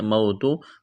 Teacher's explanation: واو ساکن سے پہلے زبر، واولین بغیر کھینچ کے پڑھنا ہے